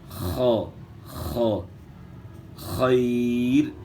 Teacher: یہاں خا جو ہے موٹے حروف میں سے، جو حروف مستعلی ہیں 7 ان میں سے خا ہے، تو خا کو آپ نے موٹا ادا کرنا ہے، گلے کے شروع سے جو ہے نا اس کو ادا کرنا ہے